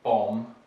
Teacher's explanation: so the b is written but it's not pronounced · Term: silent b